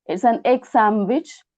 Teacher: nd changes to m